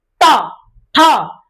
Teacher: देखोगे आपका जिह्वा मुड़ेगा, इसके बाद झटके के साथ आएगा बाहर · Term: मूर्धा वर्ण